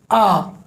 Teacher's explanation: मध्य स्वर में छोटा वाला आ आता है, यानी वो स्वर जिसको बोलने में ना तो मुख का आगे जीभ का अगला हिस्सा ज़्यादा हिलता है ना पीछे का, बल्कि बीच के हिस्से में हलचल होती है।